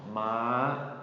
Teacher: make sure you hold that, ma. That's a long high tone.